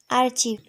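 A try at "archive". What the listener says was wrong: তো আমরা এটা আর্চিভের পরিবর্তন না, এটা আসলে সঠিক উচ্চারণ করব, ঠিক আছে? সঠিক উচ্চারণটা হচ্ছে আর্চিভ না, সঠিক উচ্চারণ হচ্ছে আর্কাইভ। আর্কাইভ। ওকে, আর্কাইভ। আর্কাইভ। আর্কাইভ। Yes, আর্কাইভ। যেখানে আমরা ক বলতাম সেখানে খ বলবো, হ্যাঁ? আর্কাইভ। আর্কাইভ।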